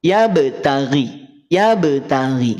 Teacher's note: Sugra itu pantulannya itu tidak tidak terdengar begitu kuat